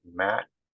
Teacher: Matt which you kind of cut it off at the end